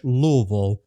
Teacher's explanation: We basically slur all of the consonants and just focus on the vowels there. We just call it Louisville.